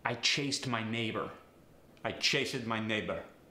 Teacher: the long a sound gets a short staccato e sound